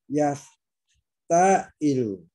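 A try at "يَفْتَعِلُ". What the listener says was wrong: Jangan dipanjangin, tekan aja. Yafta'ilu. Jangan dipanjang. Yafta jangan.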